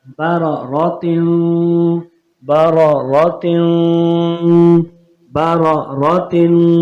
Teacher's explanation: را دونوں موٹے ہوں گے کیونکہ زبر آ گئے را کے اوپر تو را کے اوپر زبر یا پیش آیا تو را موٹا ہوتا ہے اور یہاں پر غنہ کرنا ہے.